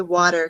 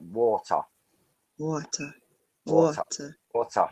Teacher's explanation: i speak with a modern rp accent so we don't pronounce the r at the end of words · you can hear the r sound at the end whereas i would use a schwa to end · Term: non-rhotic